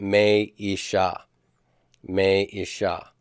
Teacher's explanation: because the stress is on the final syllable, sha is tonic, ish is pretonic, me is open and propertonic.